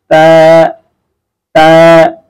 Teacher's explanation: দেখেন, আপনি জিহ্বার আগা সামনের উপরের দুই দাঁতের গোড়া, উপরের দুই দাঁতের গোড়ার সঙ্গে জিহ্বার আগাটা লাগায় শুধু খুব স্বাভাবিকভাবে বের হয়ে আসবে